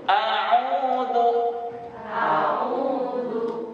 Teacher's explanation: Di u itu 2 harokat ibu. Kalau terlalu panjang a'udzu itu keliru.